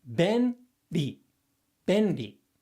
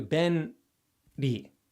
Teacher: And I think it's, generally speaking, just easier if you try and think of it as you say ben, and your tongue goes up and touches your alveolar ridge.